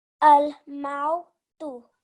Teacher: that eases into the waw leen and it becomes a mau